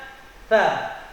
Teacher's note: lidah kita, lidah dikeluarkan sedikit dengan ujung 2 buah gigi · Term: huruf tha